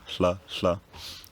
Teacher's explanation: This chl cluster reduces to a hl pronounced without the voice box buzzing, hl, like in Welsh.